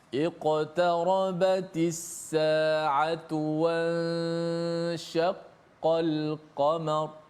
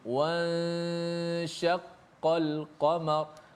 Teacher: Dipanjangkan gunnah pada ikhfa, nun bertemu dengan huruf shin.